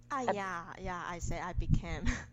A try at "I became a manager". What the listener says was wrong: Okay, so maybe you're just saying too fast. you're just saying it too fast.